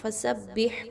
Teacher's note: ہا کے مخرج کو بہت اچھا پڑھنا ہے، ٹھیک ہے، بھاری نہیں کرنی آواز بلکہ نرمی کے ساتھ کلیئر پڑھنی ہے، وسط حلق سے نکالنی ہے۔